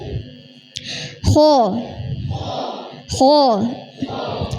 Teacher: jadi gin ko ini disebut huruf tebal karena pangkal lidahnya terangkat